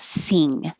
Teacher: the back of the tongue is going very high and touching the back of the mouth